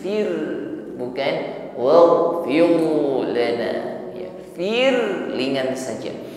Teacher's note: Maka getaran pada ra-nya ini diringankan ya, tipis.